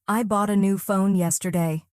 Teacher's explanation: The strong beats fall on bought, new, and phone. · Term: word stress in sentences